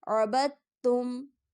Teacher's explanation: با متحرک حرف، دال ساکن حرف، جبکہ تا مشدد حرف ہے تو یہاں پر ہم دال کو چھوڑ دیں گے کیونکہ دال ساکن حرف ہے۔ با کو ہم یعنی متحرک حرف کو مشدد حرف سے ملا کر پڑھیں گے تو دال کی آواز نہیں آئے گی